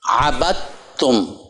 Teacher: دال کی آواز ختم ہو گئی، با کو تا سے ملانا